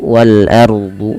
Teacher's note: Kemudian wal ardu, alif di sini, alif lam di sini kita namakan dengan alif lam qamariyah karena alif lam yang kita tulis dan dibaca dengan jelas suara lamnya. Kemudian al ardu, wal ardu, ro-nya sama tebal, ya, karena didahului dengan fathah.